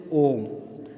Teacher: जब कभी हम ओम का उच्चारण करते हैं तो ऐसा लगता है कि हमको हर्ष स्वरों की अपेक्षा 2 गुने से भी ज़्यादा, यानी दीर्घ स्वर की अपेक्षा अधिक समय बोलने में लगा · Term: प्लुत स्वर